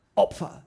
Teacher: Bei Opfer, da hast du ein Plosivlaut, P. Ja, da haut es richtig raus, da wird Energie aufgebaut.